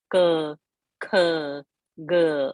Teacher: Ka varga comes from the throat, guttural. It is called kantya.